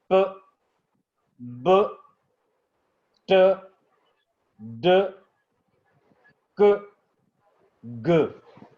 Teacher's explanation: Creation of closure and release, और release suddenly हो रहा है।